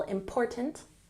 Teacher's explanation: emphasize the second syllable, important,